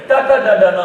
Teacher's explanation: ನೀವು ಸಾಫ್ಟ್ ಪಾರ್ಟಿಗೆ ನಾಲಿಗೆಯನ್ನು ಮುಟ್ಟಿಸಿದರೆ ಟ ಅಂತೀರಿ